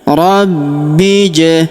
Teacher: Kemudian huruf B langsung sambung masuk ke huruf ja yang berharokat sukun, kita pantulkan atau kita qalqalahkan. Alifnya tidak dibaca atau tidak dianggap karena ini hamzah wasol, hamzah penyambung antara kata sebelumnya dan kata setelahnya ya.